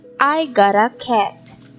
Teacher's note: this is a falling intonation because it gives a complete thought